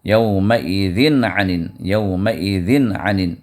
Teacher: پھر یومئذ میں یہاں پر تنوین آئی ہے، تنوین کے بعد عین آیا ہے، اور عین جو ہے حروف حلقی میں سے ہے جو حروف اظہار ہے. تو یہاں پر یومئذ کے اندر جو تنوین میں نون ہے، اس نون کو ظاہر کر کے پڑھیں گے، یہاں اخفا نہیں کریں گے کیونکہ یہ عین جو ہے حروف اظہار میں سے ہے، حروف اخفا میں سے نہیں ہے.